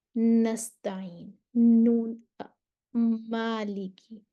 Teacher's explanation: नून और मीम को अदा करते वक्त आवाज नाक से निकलती है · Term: गुना